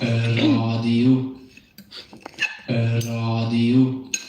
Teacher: You might notice that there's this very slight E sound in front of the R. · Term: R sound